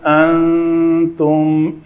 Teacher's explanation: نون ساکن کے بعد حرف اخفا میں سے تا ہے تو یہاں پہ اخفا ہوگا